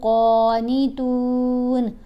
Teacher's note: قاف کو موٹا بھی پڑھیں گے، لمبا بھی پڑھیں گے۔